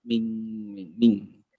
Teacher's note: Ditempelkan ke bunyi ang, ming pangkalnya nempel, pangkal lidahnya nempel. Ming. Ya, cuma vokalnya ditebalkan ming kok.